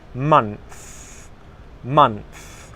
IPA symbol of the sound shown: θ